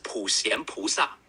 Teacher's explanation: In English, you can say it like 普 贤 菩 萨, with a gentle sh sound in xian and a soft ah sound in sa